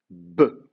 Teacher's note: Donc ça veut dire, par exemple, la lettre B, si je commence avec la lettre B, c'est une bilabiale, vous mettez les deux lèvres l'une contre l'autre